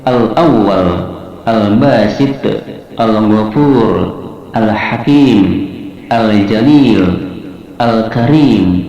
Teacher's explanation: 'lam' dibaca sebagai 'izhar', yang berarti jelas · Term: Izhar Qamariyah